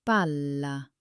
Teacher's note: Did you hear that slight hold on the L? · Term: double consonants